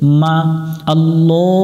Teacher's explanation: মিমের উপরে তাসদিদ আছে গুন্না করতে হবে গুন্না করা ওয়াজিব বাতি চিহ্ন দেখে গুন্না করে নিব মা আল্লাহুম্মা